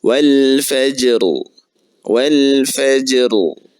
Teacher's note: Nah, ra-nya dibaca dengan tebal. Ra sukun, sebelumnya huruf jim bertanda sukun, sebelumnya lagi huruf fa.